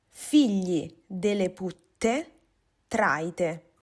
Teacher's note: la pronuncia della L nella parola che scriviamo fili era palatale e la T semplice rendeva graficamente una pronuncia doppia